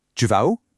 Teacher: It's literally just subject, verb, and the question word slapped on at the end, relying entirely on your voice intonation going up